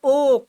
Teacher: कंठ और ओष्ठ से हो रहा है ओ